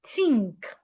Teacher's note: an average Nigerian will pronounce the word THINK as tink, pronouncing the TH as a T